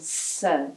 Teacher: tongue goes towards the front. It's called a dental technically, but never do you touch your teeth. It's more coming near the gums up there, you know.